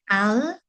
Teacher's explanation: Al-istifal means that it means what's going to happen is that your tongue will become flattened to the floor of the mouth, so your tongue will lower. So the letter is pronounced with a light sound.